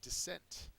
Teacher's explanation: Dissent is both a verb and a noun. Second syllable is accented.